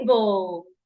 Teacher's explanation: to that rule we should stress the first syllable which means the first part of table the TA should be said louder it should be said longer and clearer